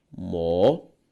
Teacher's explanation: A sílaba tônica de mocotó, tó, uma palavra oxítona.